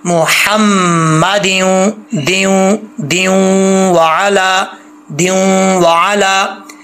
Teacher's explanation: मीम जो है वो गुने के साथ शद्द है